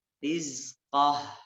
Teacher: Hati-hati zaknya tidak boleh keluar napas.